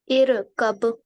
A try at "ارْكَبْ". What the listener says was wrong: ار مت کریں. ارکب. نہیں ار کا مطلب کیا, را پہ بھی قلقلہ کرنی ہے نا. ار.